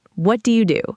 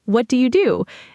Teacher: Said in a flat neutral tone, it can sound almost like an interrogation. But if you add a bit of a rise at the end, like what do you do? It suddenly sounds curious and warm.